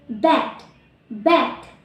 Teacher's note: B, voice, bilabial, and plosive